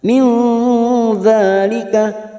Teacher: Min, nun sukun bertemu dzal ikhfa hakiki, kita samarkan bunyi nun sukun 3 harokat. Min dzalika, dza fathah berdiri 2 harokat.